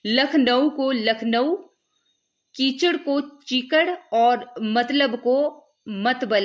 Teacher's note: एक शब्द की विभिन्न ध्वनियों के विपर्य की प्रवृत्ति भी दक्षिणी की एक प्रमुख विशेषता है,